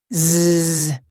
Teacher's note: the voiced sound, which sounds like a bee buzzing